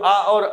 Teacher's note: यानी आ और आ स्वर का उच्चारण स्थान कंठ, कंठ से उच्चारित होती हैं।